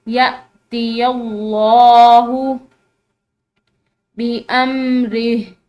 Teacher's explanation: لفظ اللہ کی لام یہ یا کے زبر کی وجہ سے ہم اس کو موٹا پڑھیں گے